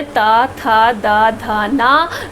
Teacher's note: इन वर्णों का जब हम उच्चारण करते हैं तो हमारी जीभ जो है वो दांतों को छूती है, इसलिए इसका उच्चारण स्थान क्या है, दंत है।